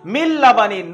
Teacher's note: নুনটা পুরো লামের সাথে মিলে যাবে, গিয়ে মিল লাবানিন পড়া হবে, কোনো গুন্না হবে না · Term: ইদগামে তাম